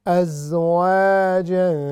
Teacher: چونکہ اس واو کا تعلق پچھلی آیت کی طرف بھی تھا، اس لیے آپ نے دیکھا ہوگا کہ اس پر شد ہے، لیکن ہم نے شد کو اگنور کر دینا ہے، اور وَكُنْتُمْ اس طرح پڑھنا ہے ہم نے، کنتم اخفاء، ازواجا الف مدہ آ رہی ہے، تو ہم نے اس کو 3 سیکنڈ تک ہم نے اس کو کھینچنا ہے